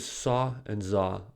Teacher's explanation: saw and Za are also produced at this place of articulation tip of the tongue is at the alveolar Ridge but it does not touch the ridge air escapes from this narrow space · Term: fricative, fricatives